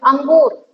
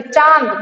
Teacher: नाक से ज्यादा जो हमारी स्वास है या वायु है वो निकल रही है